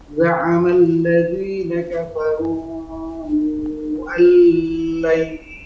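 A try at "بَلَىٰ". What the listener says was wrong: Panjang lamnya, Afwan, bukan, jangan terlalu panjang. Bala, enggak. Kul bala wa rabbi.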